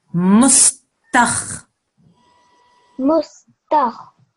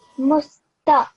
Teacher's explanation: This is a kha, so it's a thick, heavy sound.